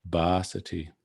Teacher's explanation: if it was a short a it might be pronounced something like busty but here it's a long a